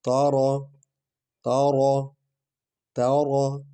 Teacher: تا کو ہلکا پڑھنا ہے، را کو پر پڑھنا ہے۔